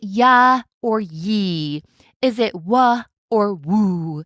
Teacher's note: But I'll also tell you that the sounds of Y and W are particularly tricky because they're glide sounds. They literally glide into the vowel that follows them.